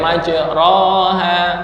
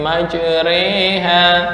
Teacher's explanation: Antara fathah dan kasroh menjadi e. Majreha, nggak boleh majroha, tapi majreha. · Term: imalah